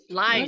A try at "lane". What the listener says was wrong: Terus line. Bukan lain ya. Line. Lane atau lane. A itu dibaca lane. Lane.